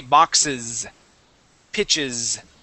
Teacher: when we add that ES, that is going to have a voiced S sound at the end. That will sound like a Z.